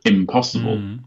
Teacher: Because the P influences the N and becomes an M sound, because it's easier to pronounce.